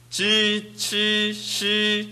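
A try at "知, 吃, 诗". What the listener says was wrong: 좋습니다.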